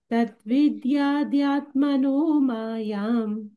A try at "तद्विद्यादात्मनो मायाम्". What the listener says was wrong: not विद्याद्या विद्यादा because it will be the vidyat the ending atmano so vidyadatmano not dyatmano तद्विद्यादात्मनो मायाम्